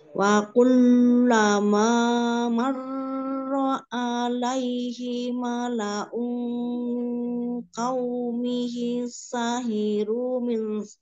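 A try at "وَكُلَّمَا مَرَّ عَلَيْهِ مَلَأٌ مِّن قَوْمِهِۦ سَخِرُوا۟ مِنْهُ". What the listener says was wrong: tapi roknya terlalu lama jangan jangan terlalu lama marro alaihi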